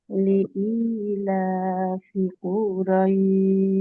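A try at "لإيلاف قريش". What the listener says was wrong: লিইলাফি কুরাইশ, টান হবে না আপু। লিইলাফি, লিইলাফি কুরাইশ।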